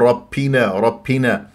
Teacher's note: الباء شديده مجهور يعني انا ما اطلع فيها نفس